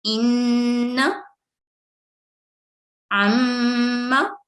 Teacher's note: गुन्ने की आवाज 2 सेकंड लंबी होनी चाहिए · आवाज नाक में ठहराकर फिर हरकत अदा की जाती है, जैसे इन्न, अम्मा।